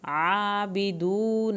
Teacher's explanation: عین کو حلق سے پڑھیں، کھڑی زبر ادا پڑھیں پوری، واو ساکن کو کھینچیں